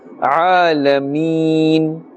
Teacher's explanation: Keep in mind that emphasis must be placed on the Ain to differentiate it from the Hamza.